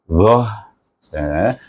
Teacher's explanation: pangkal lidah kita terangkat semasa menyebut dha. Jadi tebal sedikit bunyinya.